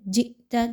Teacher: زبر ہے، جئت حمزہ کے اوپر جزم کی علامت موجود ہے، جئت جھٹکا دے کر پڑھیں گے